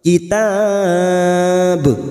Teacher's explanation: Lil kitab, kitab mat arid li sukun karena ada mat yang bertemu dengan huruf hidup yang dibaca waqaf, 4 harokat kita panjangkan dan ujungnya kita pantulkan karena ada huruf ba yang dibaca waqaf di akhir kalimat, namanya qalqalah kubra.